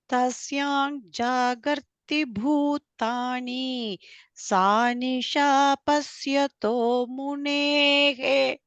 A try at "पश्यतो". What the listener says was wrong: Not pasya. Pashya.